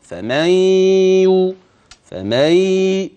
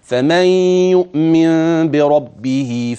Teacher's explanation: النون ستحول لياء في الفم وتدغم الياء في الياء وفي معايا غنه بتاعه النون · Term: ادغام بغنه